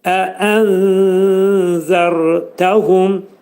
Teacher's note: Pətə zə hərfinə yetişir. Zəni biz tələffüz edərkən dilimiz 2 dişin arasına xəfif şəkildə girərək pəltə zəni deməyə çalışmaq lazımdır. Nunun 3/1 zəldə gizlədilir.